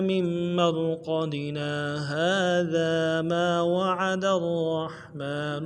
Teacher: من مرقدنا کہہ کے بغیر آواز کو بند کیے ہوئے ہم تھوڑی دیر رکیں گے ، اس کو سکتہ کہتے ہیں، اس کے بعد آگے پڑھنا